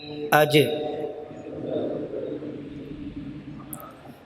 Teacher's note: آپ محسوس کریں وہ درمیانی حصہ زبان کا تالو سے مل رہا ہے